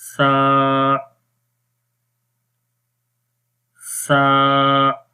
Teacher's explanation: اس حرف کو نرم پڑھنا ہے، زبان کی نوک کو اوپر والے دانتوں کے کناروں پر لگائیں گے جو سامنے والے دانت ہیں، تو اس وقت سا حرف پڑھا جاتا ہے اور اس کی آواز نرم رہتی ہے۔